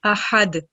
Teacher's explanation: So over here we have letter dal, and when we are pausing over here, so we ignore the dhammatan and we take it as if there's sukoon present. And when we have dal with the sukoon, we know that it is a qalqala letter, so we're supposed to produce a jerking sound